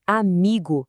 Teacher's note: A força dela tá na penúltima sílaba, no mi. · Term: paroxítoná, paroxítona